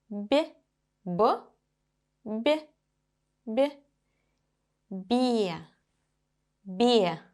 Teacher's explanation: When I say be, the sound b is softer. It is palatized.